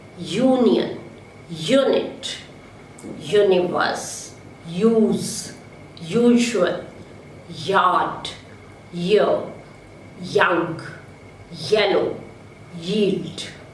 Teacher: Step number 2, the front of the tongue assumes a position for a vowel between close and half close, and then it quickly glides to the position of the following vowel. The vocal cords vibrate, producing voice. So it is a voiced, unrounded, palatal semivowel Y. In the following words, Y occurs in the initial position.